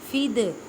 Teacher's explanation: دال ساکن ہے، کلکلہ کریں، کلکلہ کا مطلب ہے ہلا کر پڑھنا